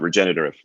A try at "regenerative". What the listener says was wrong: Almost regenerative. I think there's an extra syllable. There might be one more syllable.